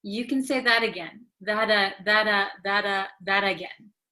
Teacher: okay because it is between an A and another a so when a t comes between two vowels in American English it um becomes like a soft D sound